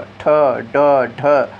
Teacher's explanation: हम लोग जीभ से अपने तालो में चोट करके बोलते हैं तो वह मूर्धन्य होते हैं